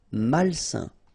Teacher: A-I-N together, it's a nasal and it's un.